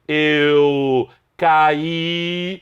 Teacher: a sílaba tônica é a última, é a vogal I, mas houve a formação de um hiato entre o A e o I